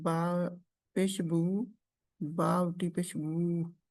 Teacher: होंठों को गोल करके हरकत को अदा करना। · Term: दम्मा